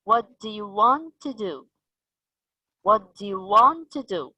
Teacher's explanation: we have weakened the first word do which is a helping verb but we stressed on what you want to do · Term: weak form, Weak form